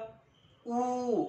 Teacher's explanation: मिटलेले थोडेसे मिटलेले पूर्ण नाही संवृत्त मग कुठला बघा संवृत्त उ ओठांचा चंबू करावा लागतो हवेचा मार्ग मोकळा सोडायचा